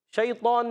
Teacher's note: شین جو ہے زبان کے درمیان، اوپر تعلق کے درمیان سے ادا کریں گے، اور یا سنگ سے پہلے زبر آنے کی وجہ سے یا لین ہوگا، نرمی سے ادا کریں گے.